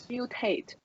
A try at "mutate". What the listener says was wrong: So, with this, we have to add an intrusion sound, which is y. So it's not mutate, but mew. this vowel is not, in fact, a vowel. It's a diphthong. It's this one here.